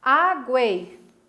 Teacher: Vejam que vocês têm uma semivogal, uma vogal e mais uma semivogal. E quando eu vou separar em sílabas, elas ficam as 3 juntinhas. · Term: tritongo